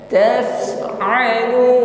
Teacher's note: huruf Fa di sini sukun nampak HAM ya ada aliran nafas